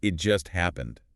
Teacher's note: Stressing just emphasizes it was very recent, signals urgency.